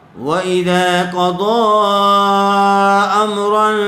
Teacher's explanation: قاف کو پر کریں گے, ایسے ہی ضاد ضاد کو بھی پر کر کے پڑھا جائے گا.